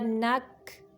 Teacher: کاف کو قلقلہ نہیں کرنا لیکن اس کی آواز کو تھوڑا جاری رکھنا ہوتا ہے